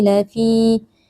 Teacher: ada ya sukun yang sebelumnya berharakat kasrah dibaca panjang dua harakat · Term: Mad thaobi'i